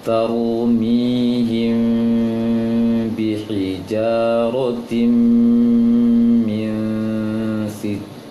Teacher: Maka ketiga dengungnya harus sama panjangnya, lamanya, selama 2 rakaat dengung.